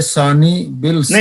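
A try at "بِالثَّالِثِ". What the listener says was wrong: नहीं, आगे वसले है, आप यहाँ भी फसले कह रहे हैं, ध्यान से, ध्यान अंदर रखें सब। बिस सालिस, ये बात खा के साथ में लाम, ये लामे शमसी है, कमरी नहीं है।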